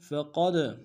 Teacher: فقد میں قاف کو موٹا ادا کرتے ہوئے دال کے سامنے لانا ہے، دال حروف قلقلہ میں سے قلقلہ کریں گے۔